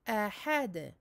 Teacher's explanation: Amincir la hamza et le ha et donner donc son rebondissement au del, la qalqala.